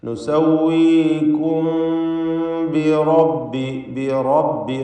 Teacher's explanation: മീമിനെ ഇഖ്ഫാ ഷഫവി നൽകി മണിച്ചുകൊണ്ട് ഉച്ചരിക്കണം. · റാഇനെ തടിപ്പിച്ച് തഫ്ഖീം ചെയ്തുകൊണ്ടുള്ള ശബ്ദം കൊടുക്കണം.